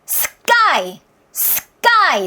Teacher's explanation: S 다음에 나오는 T, S 다음에 나오는 P, S 다음에 나오는 K 사운드는요. 된 소리가 가능합니다.